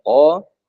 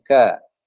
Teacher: Q itu di belakang Kaf agak depan sedikit